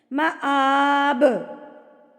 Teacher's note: عندہ حسن المآب, با پہ جب آپ وقف کریں گے تو یہ جزم لگ جائے گی اس کے اوپر, اور جب با کے اوپر جزم لگتی ہے تو وہ قلقلہ بن جاتا ہے. تو یہاں پر آپ نے اس کو ہلا کے تھرتھراہٹ کے ساتھ پڑھنا ہے